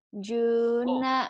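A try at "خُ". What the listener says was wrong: titiknya di atas. Hu.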